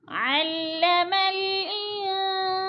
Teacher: ان پہ جو ہے اخفا ہو رہا ہے، ناک میں آواز لے جائیں گے، لفظ کو چھپا کے پڑھیں گے